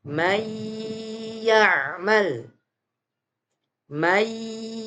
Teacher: suara Nun sukunnya melebur atau dimasukkan kepada huruf ya jadi suara Nun sukunnya tidak dibaca dengan jelas